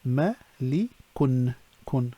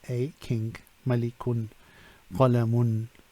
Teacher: and when now so adjectives are indicators in indefinite then an additional noon is pronounced but not written at the end of the words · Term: tanween